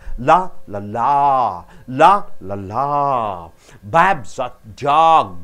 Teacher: The first syllable and the last syllable should be stressed.